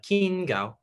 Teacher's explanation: the gao is mid tone keen it's high tone